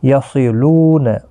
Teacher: یصلون، صاد حروف مستعلیہ ہے، پر پڑھا جائے گا۔ لو واو مدہ ہے، لام کے اوپر کھڑی زبر ہے، ایک ایک الف کی مقدار کے برابر کھینچ کر پڑھیں گے۔